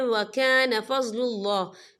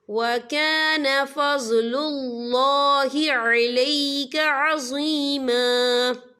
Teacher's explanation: یہاں اللہ کا نام پر پڑھا جائے گا کیونکہ اللہ کے نام سے پہلے پیش ہے